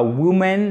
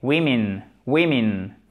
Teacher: le I, phonétiquement, à l'oreille, surtout pour une oreille de francophone, vous risquez de l'entendre comme un E. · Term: deux I courts